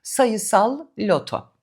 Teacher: Zor söylenir. Çünkü ilk sözcük kalın L ile bitiyor. İkincisi ince L ile başlıyor. Sayısal loto ya da sayısal loto olmaması için iki sözcük arasında minicik bir durak vermek iyi olur.